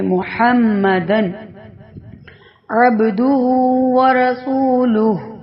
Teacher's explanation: تنوین کے فوراً بعد حروف حلقی میں سے عین آ گیا ہے تو اس لیے اظہار کر کے پڑھ رہے ہیں ، یعنی ظاہر کر کے پڑھ رہے ہیں کہ محمدن عبدہ